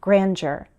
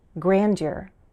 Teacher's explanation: I use a J sound grandeur, but I've heard some Americans use a D sound grandeur.